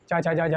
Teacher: चा छा जा झा यहाँ को स्पर्श संघर्षी, ये तालु से संबंधित होते हैं